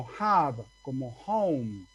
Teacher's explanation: aspira una hache aspirada exactamente de espíritu áspero